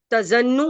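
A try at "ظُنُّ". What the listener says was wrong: मुझे सुनने में ऐसा लग रहा है जैसे आप जोए के ऊपर जबर बोल रही हैं। जोए पे तो पेश बोलनी है ना आपको, जुन्न। असल में नून जो पेश की साउंड गोल होती है ना,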